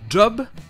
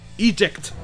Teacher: c'est dj comme s'il y avait un d devant